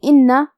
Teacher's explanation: حرف النون پہ تشدید ہے تو 2 حرف کے برابر ہم حرف النون کو پڑھیں گے کیونکہ تشدید کی اصلیت 2 حرف ہے.